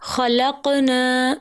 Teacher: خلقنا کی نون کے ساتھ الف مدہ ہے جس کو 2 حرکت کے برابر لمبا کرنا تھا. نا کو لمبا نہ کرنے کی وجہ سے خلقنا معنی کہ ان عورتوں نے پیدا کیا، استغفر اللہ، معنی جو ہے وہ کفر تک پہنچ گئے.